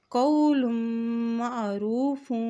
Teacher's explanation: قول معروف ومغفرۃ، یہاں دیکھیں قا زبر و قو، لام کی دو پیش کو میم کے ساتھ ملاتے ہوئے پڑھیں گے کیونکہ میم کے اوپر شد ہے، جب میم کے اوپر شد آتی ہے تو وہاں پر غنہ بھی ادا کیا جاتا ہے۔